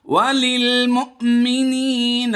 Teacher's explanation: حمزہ ساکنہ پر جھٹکا دیں گے